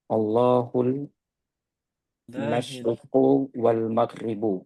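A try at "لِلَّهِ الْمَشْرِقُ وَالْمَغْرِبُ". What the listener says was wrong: Bukan Allahu, tapi lillahil. Lillahil masyriqu wal maghribu.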